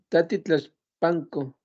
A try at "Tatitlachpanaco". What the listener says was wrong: Tatitlach- Tatitlachpanco. En este caso, para que se escuche bien, ya no se le quita la A al final, ya se queda y nada más se le agrega el co, Tatitlachpanaco, Tatitlachpanaco.